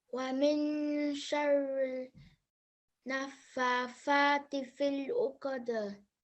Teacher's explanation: make sure that you have 2 seconds on the nasal sound, 2 seconds on the vertical fatha, again 2 seconds on the vertical fatha. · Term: noon ghunnah